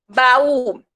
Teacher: então a gente percebe que as vogais se separam na hora de pronunciar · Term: hiatos